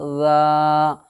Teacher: پہلے ذال کے اوپر زبر ہے، اس لیے الف مدہ ہوگا، الف مدہ کو ایک الف کے برابر کھینچ کر کے ادا کریں گے